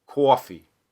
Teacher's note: you'll get almost an O and then an off Glide onto a schwa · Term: rounding